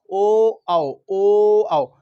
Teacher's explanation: कंठोष्ठय, कंठोष्ठय में आते हैं दो वर्ड ओ आओ, ओ आओ, यानी कंठ से भी निकलेंगे और ओष्ठ से भी निकलेंगे